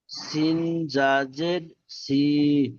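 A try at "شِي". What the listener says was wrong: যা নয়, ইয়া। ই- যে অক্ষরটা আছে তার পরের অক্ষরটাই হলো ইয়া। যেমন ধরো এখানে শিন এসছে, শিন নিচে জের এসছে, ইয়ার উপর সাকিন এসছে, তাহলে শিন ইয়া জের।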